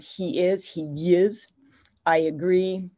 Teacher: we have this insertion of a Y sound